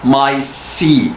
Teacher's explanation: Now the sa in seat is pronounced for a little longer than usual. The consonant sound in the second word is a stop sound.